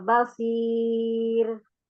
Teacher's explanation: Kalau إن basir itu terlalu tinggi nanti jadi kayak pertanyaan. jadi lurus ya, basir.